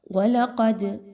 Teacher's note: وَلَقَدْ، دال کے اوپر جزم کی علامت ہے، دال حروف قلقلہ میں سے ہے، اس لیے یہاں پر اس کو ہلا کر پڑھا جا رہا ہے، آواز کو روکنا نہیں ہے بلکہ جاری رہنے کی طرف رکھنا ہے۔